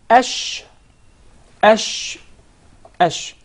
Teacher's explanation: the sheen is articulated from the middle of the tongue, and what lies opposite to it from the upper palate, or the roof of the mouth